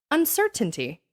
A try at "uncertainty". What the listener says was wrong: It's too many T's and too many emphases. Yeah, emphasize. Too many emphasize. Uncertainty. Uncertainty, not uncertainty.